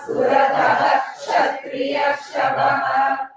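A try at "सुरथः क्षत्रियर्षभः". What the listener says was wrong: There's a small gap. Suratha And Ksha will, Visarga and Ksha can never join. So Surataha Kshatriyarshabaha.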